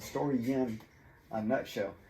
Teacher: So here's my story in, and when you connect story and in, this Y just appears out of nowhere.